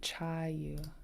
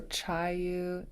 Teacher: Okay, so we have a long, low U, chayu